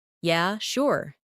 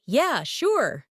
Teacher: if someone says, Yeah, sure. in a flat tone, it might mean they're not really interested. But if they say, Yeah, sure. with excitement, it's genuine agreement. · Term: intonation